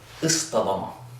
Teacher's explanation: we just turn it into a 'Taah,' if it follows a 'Saad' or a 'Daad.'